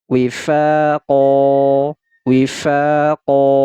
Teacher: maka huruf q ini kita panjangkan dua harakat wifaqo nah perhatikan ini tidak lagi kita baca qon tetapi kita baca qo panjangkan dua harakat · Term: Mad Iwat, mad iwad